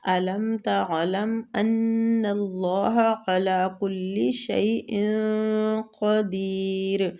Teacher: تنوین کا ہم نے اخفا کرنا، اور اخفا قاف کے مخرج کے قریب جا کے کرنا ہے